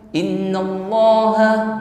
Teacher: Nun tasdid musyadadah ukuran dengung yang paling sempurna guna Akmal ya dengung yang paling sempurna di sini tahan terlebih